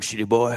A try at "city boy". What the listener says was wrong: You know what it sounds like you're saying, right? It sounds like you're saying shitty boy. City boy.